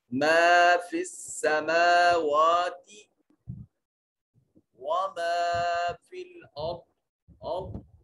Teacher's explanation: را کو مفخم پڑھا جائے گا، را ساکن ہے اور ما قبل حرف کے اوپر فتح ہے، یہ مفخم ادا کریں گے.